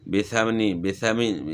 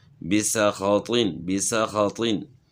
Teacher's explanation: بسخاطین کے سین کی ادائیگی میں سیٹی کی آواز نکلے، نیز خا اور طوا کو موٹا پڑھا جائے گا۔ تو حروف صفیر جو ہے نا اس میں سیٹی کی مثل آواز ہوتی ہے، تو یہاں سین کی آواز میں سیٹی کی آواز ہوگی۔